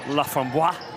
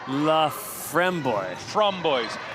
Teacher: No, the syllable, the emphasis is on the middle syllable